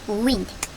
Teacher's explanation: 입을 동그랗게 모아주는 우 소리로 시작을 합니다. 그래서 W-I-N-D wind가 되죠.